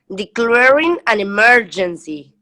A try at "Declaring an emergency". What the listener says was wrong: Okay, try this first word again. This one wasn't very clear. I think it's the C and the L together. So it's declaring an emergency.